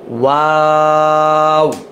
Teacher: ঠোঁট গোল করে শুরু, গোল করেই শেষ